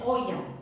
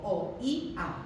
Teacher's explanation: La fuerza de voz está en la vocal débil, esa es una anomalía y la marco con una tilde. · En oía no hay un triptongo, sino que lo que hay son dos hiatos, la O con la I y la I con la A. Porque fijaos que no digo oya o no digo oya, sino que digo o-i-a.